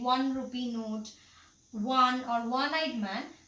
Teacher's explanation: because 1 begins with the consonant sound W